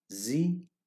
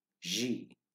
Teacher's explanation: the tip of the tongue stays a little behind upper front teeth, unlike the Z of English